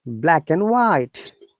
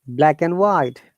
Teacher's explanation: There is no D sound.